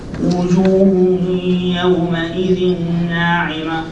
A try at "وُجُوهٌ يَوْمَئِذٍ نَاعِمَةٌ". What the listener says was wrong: A little bit longer than that. That's better, but a little bit longer.